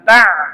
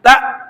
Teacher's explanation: suaranya di tenggorokan bawah, jangan diainkan, jangan ta, tapi tak, duduk di tenggorokan bawah. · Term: hamzah